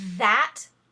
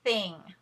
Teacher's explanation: the first is voiced your tongue is buzzing and the second is unvoiced